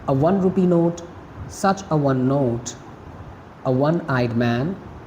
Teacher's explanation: we use article a with them because one begins with a consonant sound of w